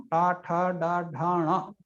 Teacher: అది మూర్ధ. టవర్గాన్ని పలకడి ఎక్కడి నుంచి పలుకుతామో టా ఠ డా ఢా ణ, అది మూర్ధ స్థానం